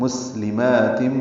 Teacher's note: سین ساکن پہ ہم صفیر کی آواز سے ادا کرتے ہیں